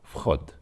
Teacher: So the v at the beginning is not really very strongly voiced. It's just basically like f.